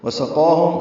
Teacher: ملانے کی صورت میں من فضۃ وسقاہم، ادغام ناقص کرنا ہوگا، واو سے ملانا ہوگا. وسقاہم سین صفیر کی آواز سے · قاف پر الف مدہ ہے یعنی قائم مقام الف مدہ ہے، 2 حرکات لمبا کریں گے